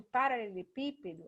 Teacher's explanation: o pi, que por um acaso é o acentuado, é a mais forte, então é a antepenúltima. Então eu chamaria ela de proparoxítona.